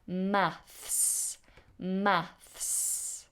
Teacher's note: notice how I said the word math is a difficult one you have to make the fricative between the teeth and then the s straightaway maths maths okay so you do the two together maths all